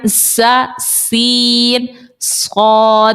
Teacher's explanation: زبان کی نوک جب نیچے کے دانتوں کے اندرونی کنارے سے لگے تو ز سین اور صاد نکلتا ہے. زبان کی نوک ٹپ آف دی ٹنگ، اس کو لیجئے آپ، اس کے نیچے کے دانتوں کے اندرونی کنارے سے لگائیں.